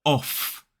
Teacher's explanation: so this word is off so we use that unvoiced F sound